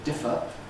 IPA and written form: ˈdɪfə (differ)